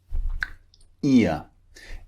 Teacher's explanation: ear is two vowels pushed together we call this a diphthong two vowels squeeze together like we've seen before ear it starts